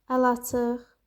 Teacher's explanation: Sondakı q da x kimi tələffüz olunur.